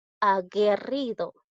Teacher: Pero en este caso yo no pronuncio la U.